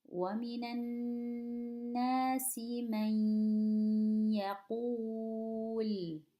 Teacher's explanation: We go straight from the meme. We don't pronounce the noon, omit it. We're going from the meme straight to the ya, but we have to stretch it. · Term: idgham